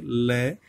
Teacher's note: ठीक है ना, इसलिए जब बोलोगे ना, तो जो जीभ की चोंच है वो तो ऊपर लग जाएगी मूर्धा पे, और उसकी साइड में से हवा निकल के आती है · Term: पार्श्विक व्यंजन